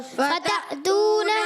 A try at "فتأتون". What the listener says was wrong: عین کی آواز نہیں ہے فتأتون